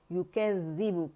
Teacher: یُکَذِّبُ کا باریک ہے, ذیل مشدد ہے, باریک ہے, ٹپ ٹو ٹپ اس کا مخرج ہے, دانت اوپر کے اور زبان طرف لسان جو ہے سامنے فرنٹ اپر ٹیتھ پہ جا کے لگتے ہیں